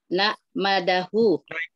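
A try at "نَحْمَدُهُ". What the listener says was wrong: Bukan begitu cara membaca haknya, Bu. Hak itu bukan bunyinya nak. saya Hamidah Yahmadu. Hamidah Yahmadu. Itu satu kata dengan alhamdu sebenarnya. Kalau Ibu pakai ilmu, alhamdu itu adalah masdarnya. Nahmadu itu adalah fi'il mudhari'nya. Kalau pakai ilmu maka akan memudahkan kita untuk mengucapkannya. Nahmaduhu.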